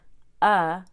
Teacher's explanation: your tongue is super relaxed in the middle of your mouth and your mouth is halfway open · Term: schwa